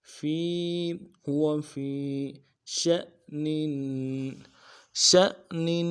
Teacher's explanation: حمزہ کے اوپر جزم ہے، ان ساکن ہے تو جھٹکا دیں گے. ش ش، نون کے نیچے تنوین ہے، غنہ کریں گے.